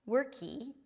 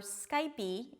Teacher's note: adding a vowel at the end of words that end with a consonant